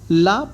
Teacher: ला प्रयत्न के आधार पर पार्श्विक ध्वनि है